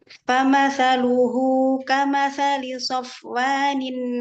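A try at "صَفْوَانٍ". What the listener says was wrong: Ya, so tambahkan itbaknya pada sod. Famathaluhu kamathali so. Naikin lagi suaranya ke langit-langit mulut.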